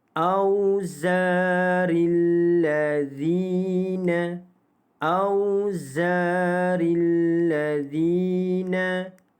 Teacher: Zina itu dibaca dengan panjang 2 harakat mad asli huruf ya